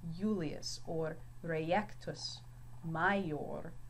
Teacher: When his name's written in Latin, it is not pronounced Julius, but Julius. So the I has more of a Y sound here.